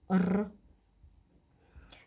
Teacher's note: и этот звук гласный безударный следующая буква Р обозначает звук р этот звук согласный звонкий Он сонорный у него нет пары по звонкости глухости